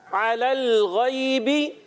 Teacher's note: आइन को हलक के दरमियान वाले हिस्से से, हुरूफ़े हल्की में से है